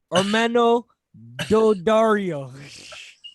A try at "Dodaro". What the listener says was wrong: No, Dodaro, not Dodario.